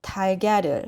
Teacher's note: You read as 달걀을 because here 리을 goes to the 이응 position. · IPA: [달갸를]